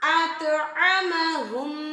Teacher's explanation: மீமை மீமுடன் இணைத்து ஓதுறது நம்மளுடைய இரண்டு உதடுகளும் சேர்ந்தார் போல் ஒட்டி அழுத்தி வெளிப்படும் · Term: இத்ஹாம் ஷஃபவி